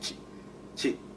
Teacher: It's like you just stop it. It's a glottal stop. · We don't draw out our vowels, which is different from English.